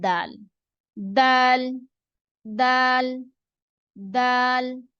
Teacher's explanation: दाल में जो जबान की नोक है, ये भी ता की तरह जो है ऊपर वाले जो दांत हैं सामने के, उनकी जड़ की तरफ लगती है।